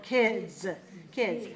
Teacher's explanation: So we have to allow more time to make the D voiced and the Z voiced, because both of those are voiced. So we pull the vowel longer.